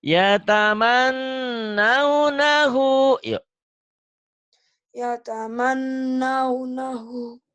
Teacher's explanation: yataman nunnya ditahan kan gunah